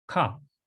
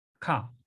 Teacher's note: We know that it has to be short and high and in the back of the throat. And then the A sound in all of these letters, again, is going to be ah.